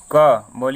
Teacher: देखिए आवाज कहाँ से आ रहा है? कंठ से आ रहा है।